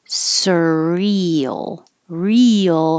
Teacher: you're going very high for the E and then sliding your tongue down and up for the L